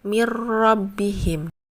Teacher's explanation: idgham bilagunnah atau memasukkan tanpa dengung hurufnya ada lam dan ro